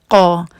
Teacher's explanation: اس کے مخرج کے لیے آپ کو اپنے زبان کا پچھلا حصہ جو ہے اس کو نرم تالو کے ساتھ لگانا ہوتا ہے، تب آپ کا یہ حرف ادا ہوتا ہے۔ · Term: قاف